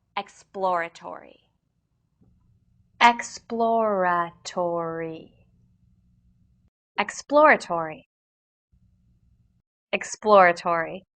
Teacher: P sound immediately followed by L and R sounds